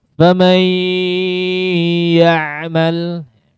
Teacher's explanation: Maka hati-hati jangan dibaca full masuk ke khayshum. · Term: nakis